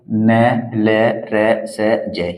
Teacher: जैसे आप बोलकर देखिए न, न को बोलेंगे ना आप, वो जो ऊपर के दांत है हमारे, उस दांत के ऊपर के हिस्से पर हमारी जीभ की नोक लगेगी, और जब वहां पर हमारी जीभ की नोक लगेगी तो अंदर से जो हमारे वायु आएगी, वो जीभ हमारी उस वायु को यहाँ पर रोकने का प्रयास करेगी, और उस रोकने के प्रयास में ही इन व्यंजनों का यहाँ पर उच्चारण होता है। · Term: वर्तस्य व्यंजन